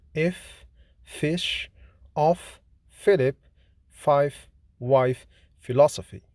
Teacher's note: F is voiceless, fortis, labiodental, fricative consonant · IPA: /f/